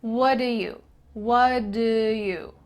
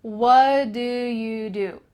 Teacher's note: The T in what is cut out, and instead it's replaced by the word do, which is linked together.